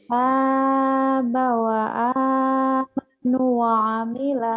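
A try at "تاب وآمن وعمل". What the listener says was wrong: Wa amanah, mana wa amanu? Wa amanah bukan wa amanu, wa amanah, wa amila.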